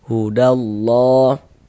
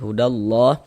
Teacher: Nah, karena di atas lafaz Allah ada tanda ini nih harakat fathah berdiri yang berbentuk alif kecil seperti ini. Sehingga lafaz Allah dibaca panjang. Mad thobi'i panjangnya dua harakat.